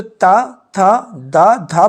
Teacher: बोलते समय आपकी जीवा आपके दांतों को स्पर्श कर रही है रगड़ रही है उनके साथ में यहां पर अगर हम बात